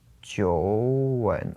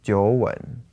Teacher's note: So it's 2 third tones, 九 and 稳. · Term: tone change